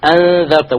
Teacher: See, now careful, this is very difficult to pronounce. 2 hamzas so close to one another. Notice how he will do it with crisp, clear 2 hamzas